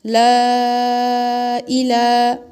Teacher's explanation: الف مدہ کے برابر کھینچیں گے، مد کے جتنا نہیں کھینچیں گے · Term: کھڑا زبر